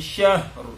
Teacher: ro itu dibaca tebal ketika dia sukun karena wakaf, karena berhenti. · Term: ro tebal